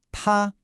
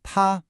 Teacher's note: This is the first tone. I want you to think of it as high and flat, almost like you're holding a note when singing. Keep your voice at the top of your natural range.